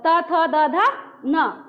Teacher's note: त बोलते हैं तो मेरा जीभ दोनों दांत में आके अटक जाता है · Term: दंत न